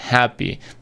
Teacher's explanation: happy es, se pronuncia con una A abierta, happy. Pero en este caso lo vamos a reducir por una corta.